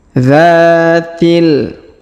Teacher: Huruf dza kita panjangkan 2 harokat karena di depannya terdapat alif